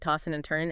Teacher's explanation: You often drop the G sound, right? Tossing and turning and the D and N might blend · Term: G dropping